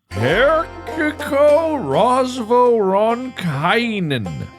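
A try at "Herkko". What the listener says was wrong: I think it's Herko. There's no vowel after the K, between the R and the K.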